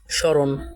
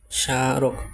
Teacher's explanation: সে মোফলা অনুচ্চারিত থাকে এবং মোফলা যুক্ত শব্দটি সামান্য নাসিক্য রূপে উচ্চারিত হয়